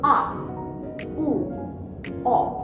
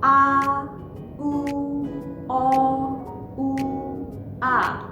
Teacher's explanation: These 3 sounds, you will feel they come from the back of the throat.